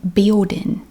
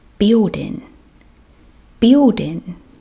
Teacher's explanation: you drop the g the g just disappears we don't worry about the g